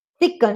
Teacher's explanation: examples of possible syllabic velar nasals would be thicken, thicken.